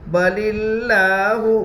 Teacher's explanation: لفظ اللہ کے لام سے پہلے زیر ہے اس لیے لفظ اللہ کے لام کو باریک پڑھیں گے. لام کے اوپر تشدید ہے، تشدید والے حرف کو 2 مرتبہ پڑھتے ہیں، ایک بار پہلے حرف سے ملا کر اور ایک بار خود سے.